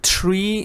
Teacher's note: this is a th but it's on voiced again your tongue goes between your teeth and you push out the air without vibration